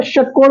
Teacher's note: लेकिन जब षटकोण बोलते हैं, षटकोण, ठीक है, शट नहीं है, षटकोण, तो षटकोण बोलते हैं तो जीभ मुड़ती है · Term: जीभ को मोड़ के